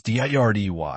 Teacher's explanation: When the letter T falls between two vowel sounds, it changes from a sharp, hard /t/ to a very soft /d/ sound. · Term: Flap T